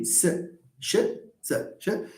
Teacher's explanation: you will feel that your tongue is going to the alveolar ridge and retracting to the palate, going to the alveolar ridge and retracting to the palate. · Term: alveolar and the palatal